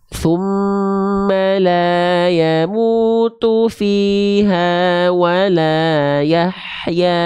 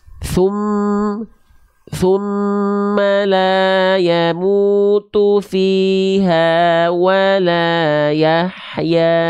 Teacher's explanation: pastikan dah-domahnya maju ya vokal u-nya maju